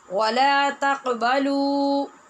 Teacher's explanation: قاف پہ قلقلہ ہوگا اور با پہ بھی قلقلہ با ہے، لیکن وہ تو بہت کم ہوگا کیونکہ زبر والی ہے